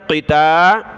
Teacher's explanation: قاف کو موٹا پڑھنا ہے، تا باریک ہے، قتا۔ لام کو اگلی لام کے ساتھ ملایا، پھر اگلی لام کو تا کے ساتھ ملایا۔